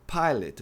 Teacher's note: o O é pronunciado como um E átono.